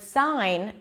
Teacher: we don't hear the G sound in the word sign